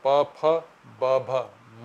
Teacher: बोलने पर हमारे दोनों होठ एक दूसरे को छूते हैं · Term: प वर्ग